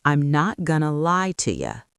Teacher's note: Notice how you reduced to ya.